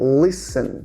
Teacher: Então a gente junta o som do S direto com o som do N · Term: silent letter, letra muda